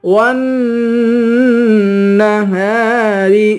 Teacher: واو کو نون سے ملا کر نون پر غنہ کریں گے